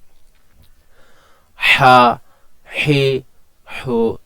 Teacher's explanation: খলকের মধ্যখান থেকে এটা উচ্চারিত হবে এবং বাতাসটা একটু আংশিক গরম হবে